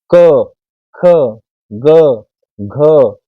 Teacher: सभी का उच्चारण स्थान कंठ है क वर्ग का